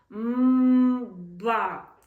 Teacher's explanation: Ми робимо таку схему м ба. Тобто, коли ми ідемо на перехід до звука б, ми закриваємо ніс, блокуємо носову порожнину і дитина говорить щось схоже на звук Б.